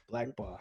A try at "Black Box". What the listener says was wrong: You gotta do emphasis on black. Not no white box, not no orange box.